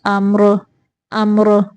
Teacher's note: اگر ہم یہاں پہ ملانے کی صورت میں پڑھیں گے تو پھر ہم را کے نیچے زیریں ہیں تو ہم را کو باریک پڑھیں گے۔ اگر ہم یہاں پہ رکیں گے تو پھر را ساکن کے پچھلے حرف کے اوپر زبر ہے، پھر ہم را کو موٹا پڑھیں گے